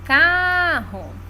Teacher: car é a sílaba tônica